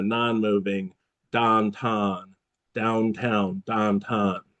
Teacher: And I've noticed it seems that in Pittsburgh sort of the opposite of with a southern accent the vowels don't like to move. So instead of this moving brown cow you have more of a non-moving don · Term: non-moving downtown